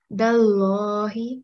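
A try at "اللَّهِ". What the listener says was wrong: you need to round this lam.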